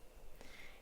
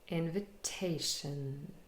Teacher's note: So we have in, main stress, shun, 4 syllables. And the secondary stress is on the first syllable